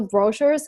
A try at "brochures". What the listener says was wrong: I cannot say brochures. We move the stress, and we move the stress to the second syllable, brochures. We have to put the stress on the second syllable. Again, brochures, brochures. I cannot say brochures. We have to put the stress on the second syllable, brochures.